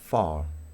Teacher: En inglés británico es far, ¿ok? Fíjate que nos da la impresión que al final de la palabra la vocal pareciera más larga. Esta es una vocal larga.